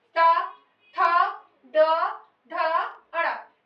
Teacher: टा, ठा, ड, ढ, अड़ा। ये देखिए जीभ को मोड़ कर ले जाके मूर्धा तक स्पर्श करना पड़ता है और वहां से श्वास बाहर निकल रही है